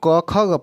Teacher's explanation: जैसे आप जब क ख ग पढ़ते हैं, क वर्ग की जब उच्चारण करते हैं उसमें आपका कंठ होता है, वो आपके कंठ से निकलता है।